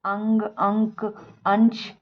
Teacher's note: अनुस्वार के उच्चारण में नाक से ध्वनि अधिक निकलती है और मुख से ध्वनि कम निकलती है